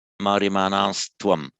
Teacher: Whenever you get a word ending in an N, followed by another word beginning with a T, that becomes by Sandhi Maryamanastvam. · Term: euphonic Sandhi